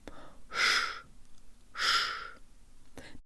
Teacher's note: Not sh with a high tongue, but sh with a low tongue. The tongue rises at the end of this syllable to prepare for the soft N, which sounds like it has a Y built into it, and the last ye sounds like a schwa.